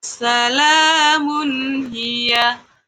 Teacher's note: Tanwin bertemu ha. tanwinnya harus dibaca jelas dan tidak boleh berdengung. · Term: izhar kholqi